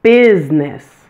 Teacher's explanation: be careful with the word business. It has a dropped middle syllable. Pronounce it with only two syllables.